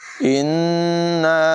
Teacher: نون مشدد میں غنہ کریں گے